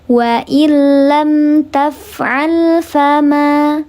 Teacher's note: namanya mad tabi'i, fathah menghadapi alif, dibaca panjang 2 harakat.